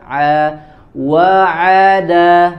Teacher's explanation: Timbangannya, perpindahan dari satu huruf ke huruf yang lain itu sama, harus sama. Kemudian huruf ainnya disempurnakan dari tengah tenggorokan bersama dengan huruf ha